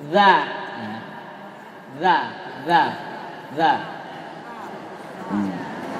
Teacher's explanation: huruf dzal, ujung lisan diapit kedua gigi